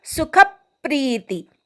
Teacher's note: खवर आघात घ्यायचा, प्री दीर्घ म्हणायचा, ती ऱ्हस्व आहे